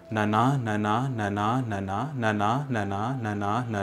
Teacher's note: which is just 8 repetitions of one short syllable followed by one long syllable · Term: pancha-chAmaram